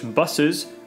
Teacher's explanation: type of change is sound insertion as in english buses where an epithetic uh comes between the two alveolar fricatives